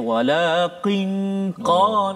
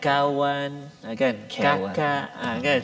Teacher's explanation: Maknanya pangkal lidah kita tu, qaf kat depan dia, kaf dekat depan dia, qaf di belakang, dekat dengan anak tekak. So kaf depan dia.